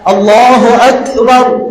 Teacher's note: দেখেন কাপের পর একটা ইকো আসে কিনা